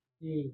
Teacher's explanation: Kalau D latin itu ujung lidah bukan ketemu dengan pangkal gigi seri, tapi ketemunya langit-langit. D coba. D.